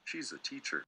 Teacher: strong and weak stresses in a sentence she's a teacher notice so you see big small small big small